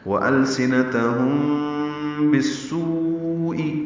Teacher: میم ساکن کے بعد با آنے کی وجہ سے اخفاء شفوی ہے. وَأَلْسِنَتَهُمْ بِالسُّوءِ، با کو سین سے ملا دیں گے.